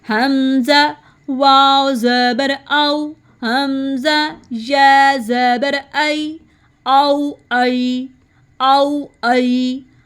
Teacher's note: اب پڑھیں گے حمزہ حلق کے نیچے سے. ہم نے اس کو تھروٹ کے لاسٹ سے ادا کرنا ہے